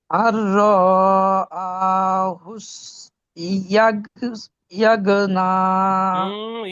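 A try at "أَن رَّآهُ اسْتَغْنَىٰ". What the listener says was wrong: ইয়া কথা পাচ্ছেন, ইয়ার নক্তা উপরে থাকে না নিচে থাকে?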